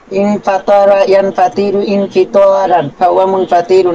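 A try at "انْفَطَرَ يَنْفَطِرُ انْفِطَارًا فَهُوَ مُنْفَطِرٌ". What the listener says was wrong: খেয়াল করেন, আপনার যে সমস্যাটা একটু খেয়াল করেন। আপনি দেখেন এখানে প্রবলেম হয় আপনার এই যে ইনফাতার ইয়ানফাতির, এখানে একটা টান দিয়ে দেন আপনি, ছোট্ট করে টান হয়ে যায়। এটা কিন্তু লাহানে জলি হয়ে যায়, বুঝছেন কিনা?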